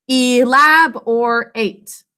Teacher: in the first syllable e says its name in an open syllable